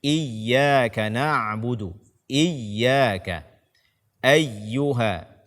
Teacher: membaca ya tasydid dengan datar atau tanpa ditekan